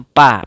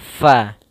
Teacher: gigi seri kita menempelkan dengan bibir bawah. Maka fa tidak dibaca dengan pa